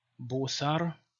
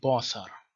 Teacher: So the Western pronunciation has o, and the Eastern one has a · in the West it's pronounced o, in the East it's a. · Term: zqofo